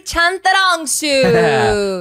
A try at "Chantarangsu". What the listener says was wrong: It's the first T. It's not a that, so it's just Chantarangsu.